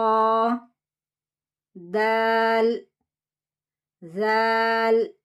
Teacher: தால்ல அலிஃப் மத் இருக்குது தா இல் லாம் செக்கின்ல போய் நிறுத்தணும்